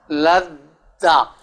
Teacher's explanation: میں نے لتدا نہیں کہا، یاد رہے، لام کو دال سے ملا کے پڑھ رہا ہوں